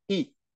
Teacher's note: So it's the same as you have an E in English, you know, the fifth letter. You pronounce that, the fifth letter in English, but at the fourth tone